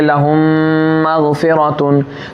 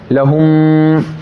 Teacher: मीम का मखरज है दोनों होंठ की तरी मिलना, लहुम। देखिए आगे वाला हिस्सा जो खुश्की सूखा हुआ हिस्सा आपके होंठों का नहीं मिलेगा, तरी जो तर हिस्सा है वो मिलेगा।